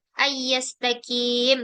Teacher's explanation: Nun mati bertemu dengan ya dan dia dibaca dengan melebur mengikuti huruf setelahnya, ini menjadi idgham di gunnah. Yastaqim, ini mad tabi'i di akhir menjadi mad arid di sukun.